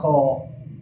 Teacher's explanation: Kha ieu makhrajna di mana? Di koro belah luar.